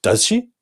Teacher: the end of the sentence we have a question mark and when we pronounce it we lift our intonation up does she right in that moment we're asking the other person